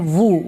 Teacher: جب آپ اپنے ہونٹوں کو گول کریں گے، پورا نہیں ملائیں گے، تو وہاں سے ادا ہوگا وو، واو پیش وو.